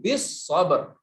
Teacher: as-sabr lam syamsiyah. Wa tawasaw bis sabr langsung sadnya.